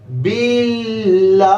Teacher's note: اعوذ، با کو لام کے ساتھ ملائیں گے، لام کے اوپر تشدید ہے، کھڑا زبر ہے، ایک الف کے برابر، اس کو لمبا کریں گے اور تشدید میں ٹھہراؤ ہوگا